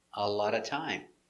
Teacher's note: The T pronounced D between two vowels